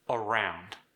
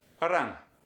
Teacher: the standard American R versus the slightly trilled Brazilian Portuguese R.